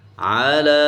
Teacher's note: لام کے اوپر کھڑی زبر ہے تو ہم عین کو نہیں کھینچیں گے، لام کو کھینچیں گے کیونکہ اس کے اوپر کھڑی زبر، اس کو الف کی مقدار۔